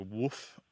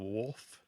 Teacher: And so the L kind of disappears. It sounds like woof instead of wolf.